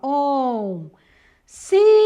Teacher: a sílaba mais forte da palavra oncinhas é o si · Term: paroxítona